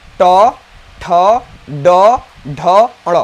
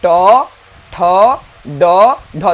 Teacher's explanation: जब हमारा जीभ अब मुड़ जाएगा, मुड़ कर जाकर ऊपर वाले तालु को स्पर्श करता है तो उसे हम कहते हैं मृधा · जब हमारा जीभ मुड़कर ऊपर वाले तालु को स्पर्श करता है तो उसे हम कहते हैं मृधा।